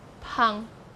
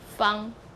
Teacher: in Taiwanese Southern Min, you pronounce it as Pang, initial P. But in Mandarin, you say Fang, initial sound is F. So you have this P to F change.